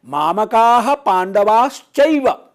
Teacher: तो यहां पांडवाः विसर्ग है, फिर च है, फिर एव है, तो च और ए, च में अ और ए को मिल गए चैव हो जाएगा, और पांडवा का जो विसर्ग है वो श बन जाएगा, तालव्य श